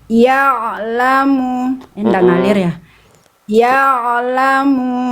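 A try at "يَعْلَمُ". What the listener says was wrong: Itu malah mantul dikit di ujungnya. Ya lamu, artinya ya lamu.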